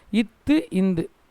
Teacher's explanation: மேல்வாய் பல்லின் அடிப்பகுதியை நாவின் நுனி அது தொடர்றதால பிறக்குது